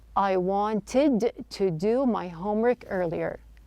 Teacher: Now notice that the T sound in the word wanted the T is dropped. This is not an uncommon practice when the T flaws and N.